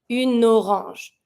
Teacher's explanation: Even if you have the E at une, you can link it. So you're going to pronounce your feminine, which is une, and then you're going to link your N with the O.